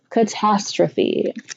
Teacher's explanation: The schwa occurs in the first and third syllable, catastrophe.